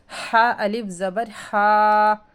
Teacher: ہا کو ہم حلق سے ادا کریں گے